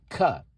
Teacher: So the back of your mouth, way where the throat begins, just below that, that's where the ka sound comes from